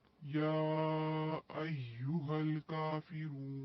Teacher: یہاں پر واو مدہ ہے، وقف کی صورت میں ہم یہاں پہ 4 حرکت کھینچیں گے